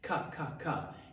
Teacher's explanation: Dada then you have your the K sound cup cup and that's the back of your tongue hitting the top of the soft palate